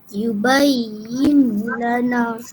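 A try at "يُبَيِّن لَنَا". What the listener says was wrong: Nun tak nak bunyi. Terus masuk lam.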